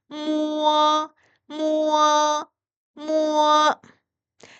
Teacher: 뭐로 해 가지고 우리 한국말 뭐 편하잖아요. 뭐로 해서 끝을 어라고 끝나면 안 되고요. 워라고 끝나야 돼요.